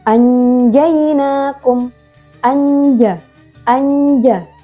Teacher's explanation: Nun sukun bertemu dengan huruf jim dibaca samar dan berdengung. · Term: ikhfa hakiki